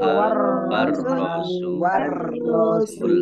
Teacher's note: Lam fathah berdiri mat tobi'i. War rasul alif lamnya alif lam syamsiyah karena tidak dibaca. Langsung masuk ke huruf berikutnya yaitu ro. Ditandai roknya ada tasdidnya.